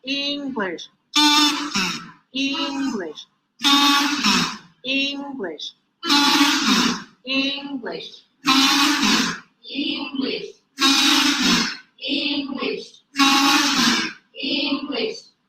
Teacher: And now we're going to work on pitch change. To emphasize pitch change, high, low, high, low, high, low, pitch change on the same words